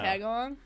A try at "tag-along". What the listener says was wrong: You're saying along like the organ. Zoc. It's like sock with a Z. Zoc.